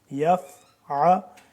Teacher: یا فا زبر یف، عین زبر ع، یف ع، عین کو کھینچ کے گلے سے نکالیں گے